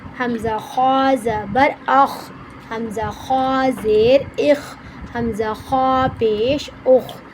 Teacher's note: غین خا حلق کے منہ کے جانب والے حصے سے ادا ہوتے ہیں۔